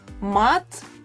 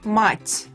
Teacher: Mat has a hard T in the end, and in the word mat, the last letter became softer because of the soft sign in the end.